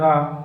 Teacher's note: रा एक वत्सर व्यंजन है, लुंठित भी है, सघोष है और अल्प प्राण भी है।